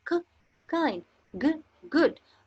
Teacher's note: The air passage is completely closed by pressing the back of the tongue against the soft palate. हमारा air pressure जो है वो मुकम्मल तौर पर क्लोज हो रहा है, रुक रहा है।